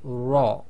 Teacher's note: mouth so instead of saying ra i with a slight smile we say raw and that is with a full mouth okay so bit more of a rounder mouth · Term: heavy versions of raw